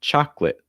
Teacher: also notice that the first o is an ah sound so you want your mouth really why ah and then the